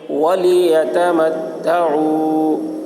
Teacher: واو ساکن سے پہلے پیش ہے، واو مدہ ہوا، اس لیے واو مدہ کو ایک الف کے برابر کھینچ کر پڑھیں گے